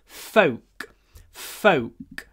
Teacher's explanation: But the w is clipped because of the k, the unvoiced k at the end.